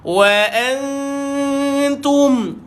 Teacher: DSS, iaitu dengung sambil senyum sebab jumpa huruf yang nipis, maka lebar saja mulut.